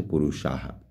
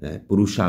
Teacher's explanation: विभिन्न प्रकृतिकाः पुरुषाः, देखिए यहाँ पर यदि हम संधि विच्छेद करेंगे तो पुरुषाः, विसर्ग का लोप हो रहा है, यहाँ पर ध्यान देंगे, विसर्ग का लोप होने के कारण से पुरुषाः बन गया, पुरुषा बन गया